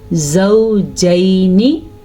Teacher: یعنی لین کا مطلب ہے نرمی سے پڑھنا. اس کو نرمی سے پڑھا جاتا ہے اور مدہ نہیں کیا جاتا، یعنی کہ لمبا نہیں کیا جاتا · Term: یا لین